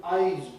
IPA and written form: aɪz (eyes)